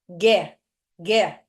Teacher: eu não fiz o prolongamento com os lábios Então esse U não foi pronunciado então eu tenho duas letras um som que que eu tenho